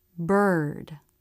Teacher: the corners of the lips come in pushing the lips away from the face the middle part of the tongue lifts towards the roof of the mouth in the middle the front of the tongue hangs down but it's drawn back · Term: r as in bird